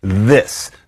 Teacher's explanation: then we have our voiced interdental fricative